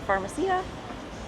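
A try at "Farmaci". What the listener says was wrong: No A on the pharmacies here.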